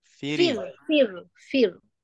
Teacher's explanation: ra mati sebelumnya huruf berbaris bawah, termasuk dalam keadaan ra dibacakan tipis. Tetapi bila terang di sini hukumnya tarqiq, muraqqaqah maknanya baca tipis, tapi ada antara kita lagi kadang-kadang dia leka dan baca tebal. · Ra mati tapi sebelumnya baris bawah kena baca tipis. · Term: ra yang tipis